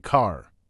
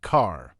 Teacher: In many British accents, especially traditional Southern British pronunciation, the final R may not be strongly pronounced, so car can sound more like car.